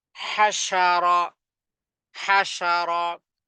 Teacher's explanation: আওয়াজ কঠিন হবে এবং আওয়াজটা ছড়িয়ে যাবে জিহ্বার জিহ্বার জিহ্বার মধ্যখান জিহ্বার মধ্যখান এবং তার বরাবর উপরে তালুর সাথে লাগিয়ে এই শিন কে উচ্চারণ করতে হবে